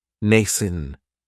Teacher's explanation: this word has 2 syllables, and the stress is on that first syllable. It has the long A sound, nascent. That second syllable has that schwa, nascent.